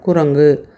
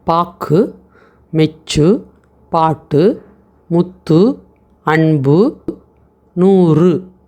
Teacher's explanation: இறுதியில் வரக்கூடிய அந்த கூ நமக்கு அவ்வளவு முழுமையா உச்சரிக்க முடியல பாருங்க அரை மாத்திரை அளவுக்கு தான் உச்சரிக்கிறோம் குரங்கு அந்த வாய் குவிய மாட்டேங்குது. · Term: குற்றியல் உகரம்